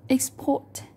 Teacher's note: We need to help local businesses to export their products. Export ở đây là động từ, chúng ta sẽ rơi vào âm thứ hai.